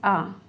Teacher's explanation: मध्य स्वर है, जिन स्वरों का उच्चारण में जीभ का मध्य भाग काम में आता है